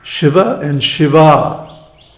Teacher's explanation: the difference is only in the length of the final vowel